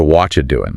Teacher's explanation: that final G just vanishes before it is even spoken. It is completely gone. · Right, the T and the Y just merge into a CH sound. Yeah, and that final G just vanishes before it is even spoken